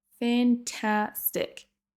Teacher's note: Fantastic. Donc c'est vraiment la deuxième syllabe qui sera prononcée plus longue et plus fort que les autres.